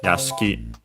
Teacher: the accent is on the last syllable